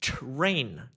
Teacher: the T becomes a ch but the R is still there. So it becomes train.